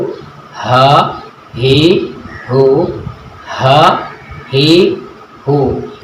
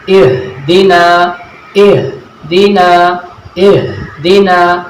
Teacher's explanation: हा की जो अदायगी है वो अक्साए हलक से होती है, यानी हलक के निचले वाले हिस्से से हा अदा होता है। जब हम हा को अदा करते हैं, गले का जो निचला वाला हिस्सा है वो वाइब्रेशन करता है।